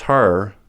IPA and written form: hɜr (her)